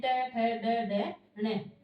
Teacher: मूर्धन्य वर्ण में ट वर्ग, ट वर्ग पूरा यानी ट ठ ड ढ ण